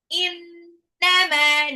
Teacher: nunnya gunnah ya mimnya 2 harokat